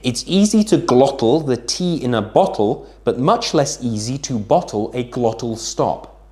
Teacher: You can hear it's right at the back of my throat, hence why it's called the glottal.